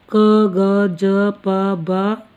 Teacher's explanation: अल्प प्राण जिनके उच्चारण में कम हवा की आवश्यकता पड़ती है।